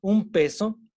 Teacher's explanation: cuando decimos un peso lo que en realidad estamos diciendo es un con una m